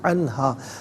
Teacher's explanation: نون ساکن کے بعد ہا حرف حلقی ہے تو نون ساکن کو یہاں پر اظہار کے ساتھ پڑھیں گے